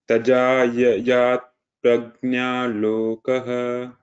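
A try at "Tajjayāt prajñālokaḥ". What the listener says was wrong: Tajayat prajna lokaha. Here there is two jas, right? So just a few places, try to focus on which is dirgha and which is hasva. That means which is long and which is short.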